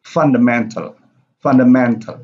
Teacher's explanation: So fun is louder than mental.